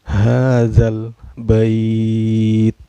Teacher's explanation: lam sukunnya dibaca secara jelas, gak boleh dengung dan gak boleh memantul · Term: alif lam komariah